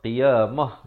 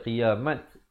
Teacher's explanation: bila sahabat waqaf di sini, ta simpul ditukarkan kepada bunyi ha, qiyamah. Jangan pula baca qiyamat. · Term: ta marbutah